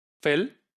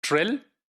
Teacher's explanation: So the l sound, which is taking place at the end, that has become, velarized. And this is also called the dark l, right?